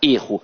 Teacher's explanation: o substantivo tem a pronúncia fechada